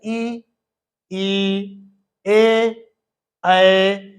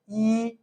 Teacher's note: इसमें जीभ थोड़ा आगे से जीभ के अगले भाग से हम लोग इनको बोल रहे हैं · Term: अग्र स्वर